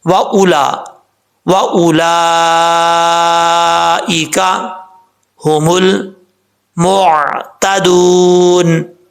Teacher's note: حمزہ کے بعد جو واؤ آ رہا ہے اس واؤ کو پڑھنے کی ضرورت نہیں ہے ، کیونکہ واؤ کے اوپر جزم، زبر یا زیر کچھ بھی